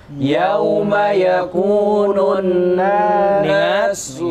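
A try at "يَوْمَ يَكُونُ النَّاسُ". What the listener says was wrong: Ingat, nun bertasydid, ditahan 3 ketukan. Nah, lupa ya di kaidah yang ke 1 kemarin ya. Jadi yauma yakunun nasu kal farashil mabthus wa takunul jibalu kal ihnil manfush.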